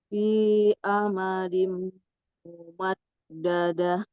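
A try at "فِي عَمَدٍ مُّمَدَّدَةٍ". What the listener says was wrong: Iya Barakallah Bu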